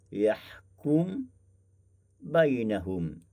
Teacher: membaca juga dengan Idam Kabir dengan memasukkan mim ke dalam ba